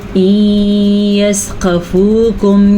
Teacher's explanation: یہاں پہ نون ساکن ہے اور نون ساکن کے بعد یا ہے، تو یہاں پہ ادغام بالغنہ ہو رہا ہے، تو ہم غنے کے ساتھ پڑھیں گے